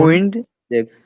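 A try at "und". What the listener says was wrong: উইন্ড না, উন্ড। উন্ড জি, shortcut উন্ড। আপনাদের উইন্ড মানে এটা একটু টান হয়ে যাচ্ছে এরকম না।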